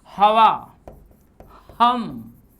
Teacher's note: तो ह का उच्चारण गले में कंठ स्वर से आता है